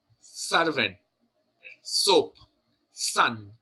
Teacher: the dental one which is the sun soap or the servent here in the word the S the tip of the tongue touches the teeth